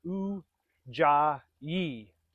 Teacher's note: Ujjayi breath or ocean breath, sometimes also called victorious breath. Ujjayi has 3 syllables, and the middle one is emphasized.